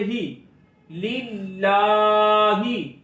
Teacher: हा के नीचे जेर आवाज को नीचे गिराएंगे, इसको खींच कर नहीं पढ़ेंगे। हा जेर ही लिल्लाही, الحمدللہ.